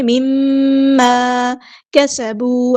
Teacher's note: الف مد آیا 2 کاؤنٹ لمبا کریں گے